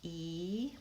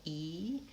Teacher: My tongue is up in the front of my mouth and it's high, E. And now down here, it's low, ah, ah. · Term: high front vowel